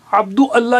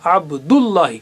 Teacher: الف کی شکل میں اس کو حمزۃ الوصل کہتے ہیں، یعنی ملانے والا حمزہ۔ کیوں کہ یہ دو الفاظ کو ملا کر اپنے آپ کو قربان کر دیتا ہے